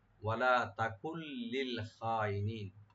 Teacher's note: তাকুল, ওয়ালা তাকুল লিল খাইনিন, এটা কাপের পরে যে নুনটা আছে, নুন সাকিন পরে যেহেতু লাম আসছে এখানে, তো নুন সাকিনটা লামের সাথে মিলে পড়া হবে, তবে গুণনা হবে না, এখানে ইদগাম হবে। ওয়ালা তাকুল লিল খাইনিন, নুন এখানে উজ্জ হয়ে যাবে, শুধু লামটা উচ্চারণ হবে।